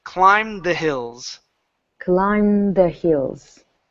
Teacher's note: don't finish the D sound can't move right into the th